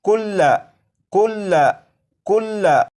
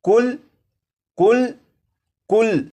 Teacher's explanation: जब इस लफ्ज़ को वक्फ में पढ़ेंगे तो लाम के ऊपर जो ज़बर है इस ज़बर को नहीं पढ़ेंगे और ये लफ्ज़ पढ़ा जाएगा कुल कुल कुल।